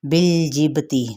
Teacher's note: بالجبتی لام کو ہلانا نہیں، با پہ قلقلہ کرنا ہے